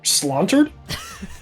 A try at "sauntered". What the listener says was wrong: No L, just sauntered.